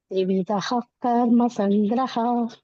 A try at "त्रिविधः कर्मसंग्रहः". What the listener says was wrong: ತ್ರಿವಿಧ ಅಲ್ಲಿ ಪ್ರಶ್ವಾಸ ಬಿಡ್ಬೇಕು ಮಾತಾಜಿ, ಮಧ್ಯ ವಿಸರ್ಗ ಇದೆ. ತ್ರಿವಿಧ ಕರ್ಮ ಸಂಗ್ರಹ.